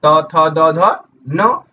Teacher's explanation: तो दांत से उच्चारण आपका तवर्ग का होता है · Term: दंत्य व्यंजन